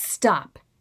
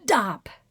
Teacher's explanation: together i had started the movement for that sound but then everything froze everything stopped including airflow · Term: block